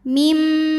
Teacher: Dari mim pertama ke mim kedua yang tasdid, maka ini ada dengung, tahan. Bunyi M dengungnya ya, dan tahan sampai kurang lebih 2 harokat.